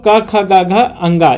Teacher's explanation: कवर्ग कंठ से होता है